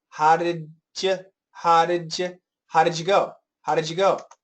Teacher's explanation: And now the dy, when we have a combination dy, we can actually have a j. So had, and more of a schwa, had j, and it's kind of a j.